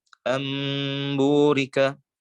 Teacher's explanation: Membalikan huruf nun sukun menjadi huruf mim sehingga bisa diidghamkan dengan huruf ba. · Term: iqlab